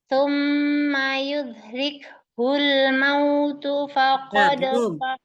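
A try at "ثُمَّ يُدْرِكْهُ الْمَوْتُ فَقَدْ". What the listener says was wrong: Dalnya hilang kolkolahnya lagi.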